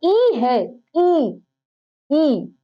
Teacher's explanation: जिसको खोलने पर मुंह जो है कम खोलना पड़ता है उसको कहा जाता है संवृत्त स्वर